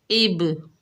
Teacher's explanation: با حروف قلقلہ میں سے ہے تو یہاں پر بھی قلقلہ صغریٰ ہوگا، با کی ڈبل ساؤنڈ آئے گی، جیسے اب۔ را کے اوپر کھڑا زبر ہے، 1 الف کی مقدار کھینچ کر پڑھیں گے، را کو پر پڑھیں گے، پر سے مراد موٹی پڑھیں گے، جیسے را۔